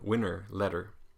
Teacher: This is the R flavored schwa. Or R-colored schwa